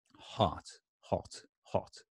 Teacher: it's not very round it's kind of relaxed and flat